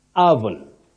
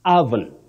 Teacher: The O at the beginning takes the mid-central sound